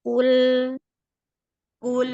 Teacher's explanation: Kalau sudah lamnya tipis, sudah bagus, qof-nya jangan ikut tipisnya. Qf-nya tetap tebal.